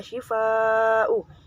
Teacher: disebut dengan bacaan mat wajib mutasil sebab mat tabi'i bertemu dengan hamzah dalam satu kalimat